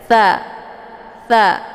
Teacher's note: makhraj huruf tha ini dia keluarnya dari ujung lidah, kemudian ujung lidahnya ditempelkan ke ujung gigi seri bagian atas. Tha, tha. Jadi kayak digigit gitu ya bacaannya.